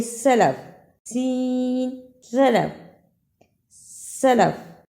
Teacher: سین میں سیٹی کی آواز صاف سنائی دے رہی ہے.